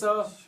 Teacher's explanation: जो हमारी जीभ है वो दांत से लगती है।